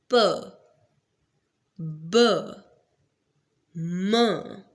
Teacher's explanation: bilabial sounds are the sounds which are produced by combining both lips together.